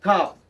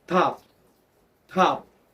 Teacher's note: Can You Feel the pop of air that's what we call aspirated or aspiration the word stop is pronounced with no pop of air again